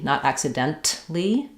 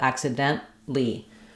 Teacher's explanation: We're not going to hear that T, not accidentally, but accidentally. We're going to stop that T. That means our N is going to be very short.